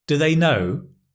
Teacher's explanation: because do in the weak, unstressed form is duh